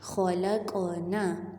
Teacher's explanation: خلقنا، خوا حرف مخفم، اس کو موٹا پڑھیں گے، قاف کے اوپر جزم ہے اور لام کی فتحہ کو ہم پھر قاف کے ساتھ ملائیں گے، اور قاف حرف جزم ہے اور حرف قلقلہ ہے اس لیے ہم نے قاف کو ہلانا ہے تھوڑا سا